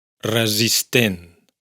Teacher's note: la primera s es sonora y la segunda es sorda